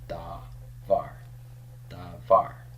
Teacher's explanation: Since Hebrew requires a long vowel in an open and pretonic syllable, then this must be the long A.